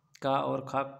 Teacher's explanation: क और ख कंठ ध्वनियां